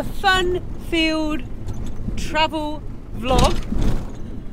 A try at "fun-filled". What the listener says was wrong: Fun-filled, I'm sure you said field